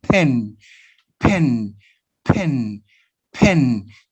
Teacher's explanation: When the sound pa appear at the beginnings, you produce aspiration